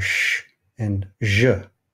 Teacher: the palatoalveolars or postalveolars are sh and zh.